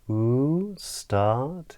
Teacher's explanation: it rises, it comes up in the voice.